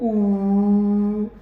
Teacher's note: तो close back rounded vowel इसको कहते हैं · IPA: /u:/